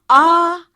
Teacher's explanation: जीवा और जो हमारा तालू है उसके बीच बहुत ज्यादा दूरी होती है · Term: विवृत